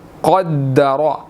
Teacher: قاف موٹا ہے، اس کو موٹا ادا کرنا ہے، اور را بھی موٹا ہے، اس کو بھی ہم نے موٹا ادا کرنا ہے، ٹھیک ہے۔